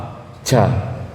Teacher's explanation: huruf jim di mana makhrajnya tengah lidah ya